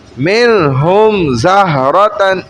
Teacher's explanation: منہم زہرۃ, یوں کہ میم اس کو اظہار شفوی کہتے ہیں. شفوی یعنی کہ ہونٹوں سے اظہار کیا جا رہا ہے